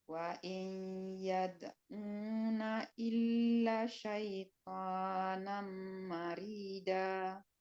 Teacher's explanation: Ya, rohnya tipis karena dia berbaris kasrah. Marida, jangan marida.